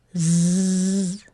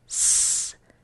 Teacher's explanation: The only difference between those 2 sounds, like my lips are doing the same thing, my tongue is doing the same thing, the difference is that with the Z sound, the Z, the motor's on. With S, the motor's off.